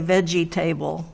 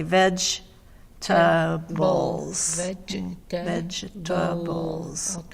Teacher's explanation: three syllables but even though there's table there we don't say table